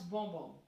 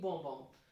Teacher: S is not supposed to be pronounced, it's simply bonbon.